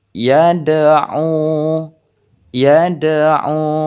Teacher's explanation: harus terdengar pantulan dari huruf dal ini